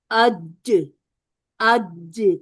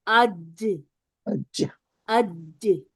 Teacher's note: جب جیم ادا ہوگا تو ہماری زبان حنک الاعلی کے ساتھ چپک جائے گی